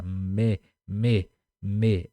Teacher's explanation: a gente usa um pouco do nariz assim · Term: palavras nasalizadas